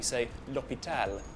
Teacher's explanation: Next feature is that the H in French is silent.